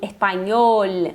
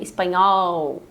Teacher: normalmente o e e o o, não em todos os países, mas a maioria são mais fechados